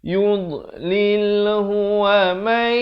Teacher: Nun mati bertemu ya. Masuk beserta dengung dua harakat. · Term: idgham bi gunnah